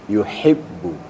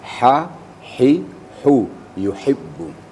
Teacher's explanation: dihembuskan anginnya dulu, hamasnya dulu, baru bunyi a-nya. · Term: huruf ha